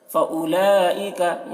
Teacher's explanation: فَأُولَئِكَ، یہاں پر حرف مد کے بعد حمزہ اسی کلمہ میں ہے تو یہاں پر مد متصل ہوگا. مد متصل کو 3-4 الف کے برابر کھینچ کر پڑھتے ہیں